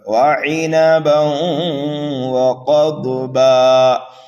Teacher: قاف اور ضاد حروف مستعلیہ میں سے ہیں، اس لیے دونوں کو پر کر کے پڑھنا ہے